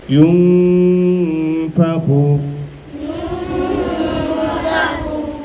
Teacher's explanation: গোপন করে গুন্নার সাথে পড়তে হয় তাহলে এখানে ছিল ইউনফা তাহলে নুন সাকিন কে আমরা ফা এর ভিতরে গোপন করব